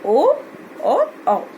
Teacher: इनका उच्चारण हम कंठ और ओष्ठ, कंठ मतलब गला और ओष्ठ ओठ पर बल दे करके करते हैं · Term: कंठोष्ठम